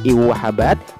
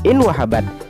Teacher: Yang pertama, in wahabat harus dibaca i wahabat, tidak boleh dibaca in wahabat sebab nun diidghamkan pada waw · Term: idgham bigunnah